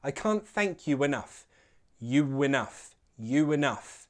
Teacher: link you and enough with a w sound. A w will intrude, sounding like I can't thank you enough.